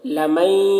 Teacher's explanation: نون کو یا کے ساتھ ملا کر پڑھیں گے، اس کو ادغام ناقص کہتے ہیں، غنہ کے ساتھ پڑھیں گے